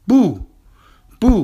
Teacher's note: Buu is a fourth tone character that means it is a falling tone